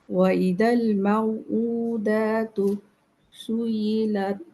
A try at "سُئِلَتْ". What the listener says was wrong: সুইলাত, সুই হলে মনে হবে যেন সাদ্দা আছে, সাদ্দা তো নাই, সুইলাত।